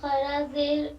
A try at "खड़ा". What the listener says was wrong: खरा नहीं खड़ा है खास है खास है खास है नहीं नहीं हलक से निकल जाता है